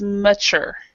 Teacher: basically it means that the stress is in the last syllable